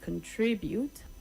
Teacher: The stress is on the second syllable and not the last syllable.